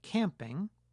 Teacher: if a speaker produces the vowel [æ] while the velum is open, some air will escape through the nasal cavity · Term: vowel nasalization